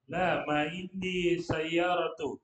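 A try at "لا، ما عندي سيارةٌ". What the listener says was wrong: Stop, titik sampai situ. Kenapa nggak ditanwin lagi sayyaratunnya?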